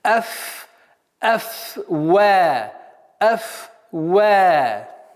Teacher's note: Так как звук «фа» и звук «вау» губные, так, нужно обратить внимание, чтобы «вау» не поглощал «фа». И «фа», чтобы фрикативность струя воздуха до конца произносилась.